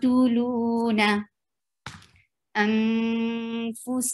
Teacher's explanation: there is ikhfa on noon, you're hiding sound of noon and getting your mouth ready to pronounce fa